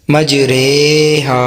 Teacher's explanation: امالہ کی را کو اردو کے لفظ قطرے کی را کی طرح پڑھیں، یعنی ری نہیں رے پڑھیں